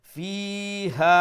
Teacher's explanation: আরবার বাড়তি উচ্চারণ করলেন তো এখানে দুইটা একটু সময় নিয়ে পড়বা ফিও একালিফ লম্বা ইয়া মাদ্দা আর হা আলিফ মাদ্দা একালিফ লম্বা